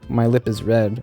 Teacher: the P has an audible release